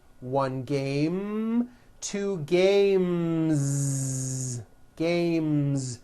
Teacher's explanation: The last sound you hear in the word game is the M sound, which is a voiced consonant. So because of that, when you add an S, the S should also be voiced.